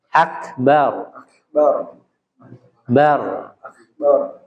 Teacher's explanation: di kalimat akbar, huruf ro-nya dibaca tafkhim tebal.